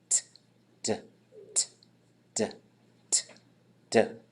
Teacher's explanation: Because if you put your hand right here and you just start making a T sound and a D sound, t, d, t, d, t, d. That's the exact same sound in your mouth, but you're turning your vocal cords on and off. T, no vocal cord.